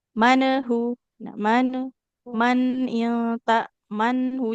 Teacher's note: Jadi pastikan lidahnya tetap menekan ke gusi agar suara itu tetap mengalir, tidak jadi memantul.